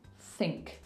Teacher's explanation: You can hear the breath coming out before the rest of the word comes. Think. So you still want a little bit of sound there.